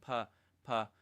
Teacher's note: 성대를 울리지 말고 바람소리 속삭임으로만 파파 파파 하게 합니다. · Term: 속삭임 기법